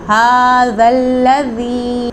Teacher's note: زبان کو اوپر والے دانتوں سے ٹچ کریں گے تو ذال ادا ہوگا۔